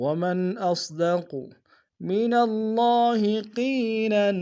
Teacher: صاد کو موٹا ادا کریں گے، قاف کو موٹا ادا کریں گے